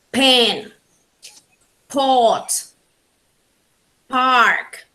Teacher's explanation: let's talk about bilabial sounds these sounds are called bilabial because we use both the lips upper and lower lips to produce these sounds